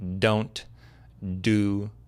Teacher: the point where you put the tip of your tongue, is where you would put your tongue when you make a D sound in English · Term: tongue placement